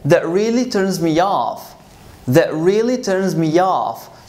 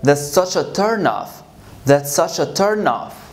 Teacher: here I'm going to use the phrasal verb as a verb. So I'm going to stress off. · but as a noun, I'm going to stress turn, the first word.